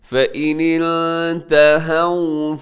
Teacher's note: ہاں کے اوپر زبر ہے اور واو ساکن ہے، تو اس کے مطلب یہ واو لین ہے، نرمی سے پڑھیے گا، اس کو لمبا نہیں کرنا آپ نے